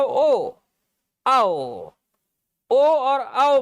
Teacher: कंठ का प्रयोग तो हो ही रहा है, ओ आओ, और हमारे लिप्स का भी प्रयोग हो रहा है, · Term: कंठोष्ठ